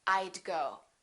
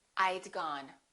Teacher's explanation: I would and I had sound exactly the same when they're contracted. They both sound like I'd.